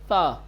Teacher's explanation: نو کے زبان کو اوپر کے دانتوں سے ملا کر آواز باہر نکالیں گے، بغیر اس کے کہ نو کے زبان کو دانت کے اوپر فشار دیا جائے، دباؤ ڈالا جائے، سیٹی کی آواز پیدا کی جائے. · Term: حرف تا